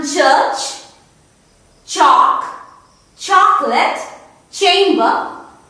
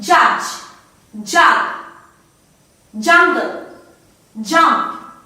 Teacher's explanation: when 2 organs of articulation, they are in complete touch, and then slowly they part, they slowly part. This is the affricate category.